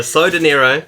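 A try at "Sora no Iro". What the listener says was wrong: No, it has no D. It's Sono Nero.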